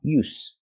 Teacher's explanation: there's no vibration it's just a s sound like stars and sleep s use so again use with a vibration is the verb